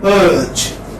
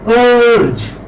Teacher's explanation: Central, because it is in the central position. Central unrounded. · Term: Central unrounded vowel